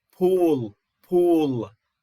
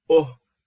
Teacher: So again, the U is tense, the O is lax. Then we have both of them are high, both of them are back, both of them are rounded.